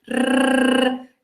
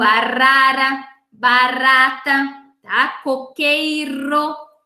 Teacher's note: É o R que vibra aqui na frente, o R, tá? O R do arara, barata, tá?